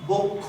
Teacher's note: সংবৃত হবে, অর্থাৎ সংবৃত মানে উকারের মতো হয়ে যাবে, এই জন্য এটার উচ্চারণ হবে বক্ষ।